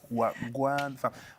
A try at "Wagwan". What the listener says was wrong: Okay, there's no difference, but the Wagwan, you say it too fast. Like, you butcher it.